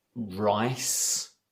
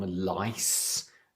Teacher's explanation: R and L, and they get crossed over. So rice might become lice.